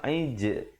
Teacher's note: Aij ada pantulan di situ, khalkhalah, dan jim pepeskan, jangan pula jim kita bulatkan